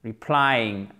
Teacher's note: accent tonique sur la seconde syllabe